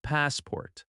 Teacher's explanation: That first part is stronger and a little longer. The second syllable is softer. Passport. In natural speech, Americans connect it smoothly.